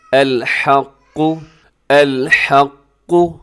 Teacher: اس آیت کے اندر قاف اپنے پہلا جو لفظ کے اندر آ رہا ہے اسے آپ نے موٹا رکھنا ہے، الحق، الحق، اور قاف کے اوپر تشدید بھی ہے تو تشدید والا حرف ویسے بھی مضبوطی کے ساتھ پڑھا جاتا ہے